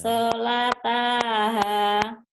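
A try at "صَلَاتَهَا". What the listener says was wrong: Hati-hati, Bu. Panjang pendeknya. Ibu sudah kenal huruf, tapi panjang pendeknya suka lupa.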